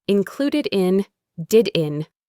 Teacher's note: That D sound at the end can connect to the next word, in.